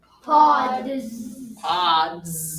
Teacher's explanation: that S was a Z, a voiced Z sound because of the consonant that came before it. Excellent job.